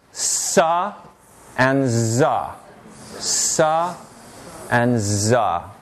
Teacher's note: created by bringing the tip of the tongue up to the alveolar Ridge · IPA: [s] [z]